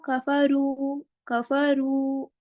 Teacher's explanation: पेश की आवाज आपकी आगे को जाती है और होठ गोल होते हैं, तब आपका वाव मद्दा अदा होता है